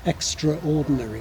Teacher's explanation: Extraordinary, where you lose the first vowel